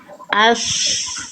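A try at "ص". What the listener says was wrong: Nah itu masih shin. Ash, nggak, bukan ash, tapi else. Lidah dalam yang naik. Dorong lidahnya ke dalam, angkat ke atas, bukan tengah, bukan tengah lidahnya. Ash jadinya shin. Else.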